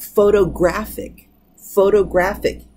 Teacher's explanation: the stress on the penultimate syllable which is the second before the last